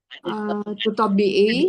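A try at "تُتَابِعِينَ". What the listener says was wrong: Bi'ina. Nah, jangan lupa nunnya ya.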